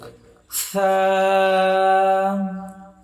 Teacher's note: জিভার আগা সামনের উপরের দুই দাঁতের আগার সঙ্গে লাগবে